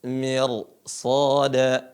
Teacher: Mir shada dibaca tebal Apa alasannya karena setelahnya huruf istilla